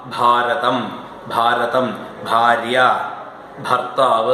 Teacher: ബ എന്ന മൃദു തൊണ്ടയിലാണ് ബ അതിനോട് തൊണ്ടയിലാണ് ഹകാരം ചേരേണ്ടത് ഭ ഭാരതം ഭാരതം ഭാര്യ ഭർത്താവ് ഒക്കെ തൊണ്ടയിലാണ് വരേണ്ടത്